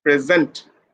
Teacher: put when you are using the word as a verb then you have to put pressure on the second syllable